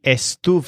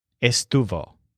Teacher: both words have Stu as the stressed syllable